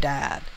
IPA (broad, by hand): dæd